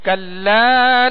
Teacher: کلا لام کے ساتھ الف مدہ ہے، ایک الف کی مقدار میں